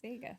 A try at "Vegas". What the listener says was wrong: So you're just diphthonging your A's up the wazoo. Vegas.